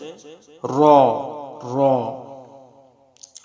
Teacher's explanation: জিহ্বার আগার পিঠ তার বরাবর উপরে তালুর সঙ্গে লাগাইয়া একটি হরফ উচ্চারিত হয়, সেটা হচ্ছে র।